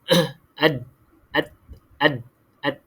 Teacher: Hujung lidah kena pada lelangit kan? Lelangit depan tu.